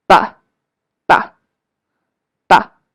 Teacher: The neutral tone. The neutral tone is somewhere in the middle and very short.